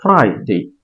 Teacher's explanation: হ্যাঁ, ফ্রাইডে ভুল উচ্চারণ, আমরা ফ্রাইডেই বলবো। ফ্রাইডে ফ্রাই, প্রথমটাতে একটু চাপ দিতে হবে, ফ্রাইডে। এরপর উচ্চারণ আই ফ্রাই আই ফ্রাই আই ফ্রাই ডে ফ্রাইডে ফ্রাইডে ফ্রাইডে বলবো না।